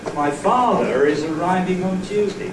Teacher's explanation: Two Word Groups, but I still got a Linking R. There is no pause between ‘father’ and ‘is’. · 2 word groups, but I've still got the linking R. There is no pause between father and is. So, yes, a word group boundary can be accompanied by a pause, but no, it does not have to be accompanied by a pause.